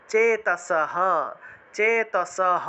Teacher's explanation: হ এর উচ্চারণটা পূর্ণরূপে হবে কারণ এই বিসর্গটা লাইনের একদম শেষে আছে